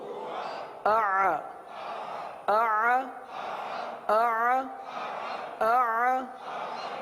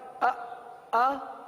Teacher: یہ درمیان میں جو عین جو ہے نا یہ جاری رہے گا, عین کی آواز ختم نہیں ہوگی. اگر آپ نے پڑھا آ تو عین نہیں رہا, آواز جاری رکھنی ہے.